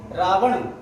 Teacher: Last में नासिका का प्रयोग करना है। शुरू में 2 वर्ण यूं ही बोल जाने हैं बिना नासिका के, अंत में नासिका का प्रयोग करना है।